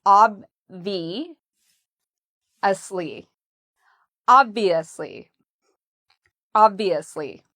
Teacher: So we put the stress on the first part, ob, and then we have the V, ob-V, and notice how my lips go under my teeth